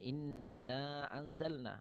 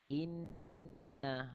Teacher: Inna dengung dua harakat. Dan hukum ni adalah hukum wajibul gunnah.